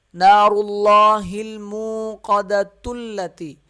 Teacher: تا لام سے مل جائے گا، یہ حمزہ یعنی کہ الف یہ نہیں پڑھا جائے گا ، نہ حمزہ پڑھا جائے گا نہ الف پڑھا جائے گا،